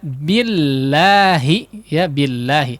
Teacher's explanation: ketika didahului oleh huruf yang berharakat kasrah maka lemnya itu tipis